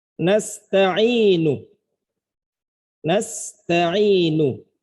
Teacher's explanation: Kalau secara utuh kita baca nasta'inu, nu-nya jelas. Itu satu harokat full.